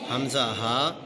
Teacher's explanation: حمزہ ہا حلق کے نیچے والے حصے سے ادا ہوتے ہیں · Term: حروف حلقی